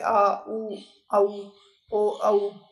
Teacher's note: जिन स्वरूप के उच्चारण में जीव का पश्च यानी कि पिछला जो भाग है वो काम करता है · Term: पश्च स्वर